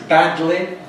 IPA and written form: ˈbædli (badly)